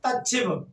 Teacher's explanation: ता के बाद सा आएगा तो ता चा में और सा छा में परिवर्तित हो जाता है।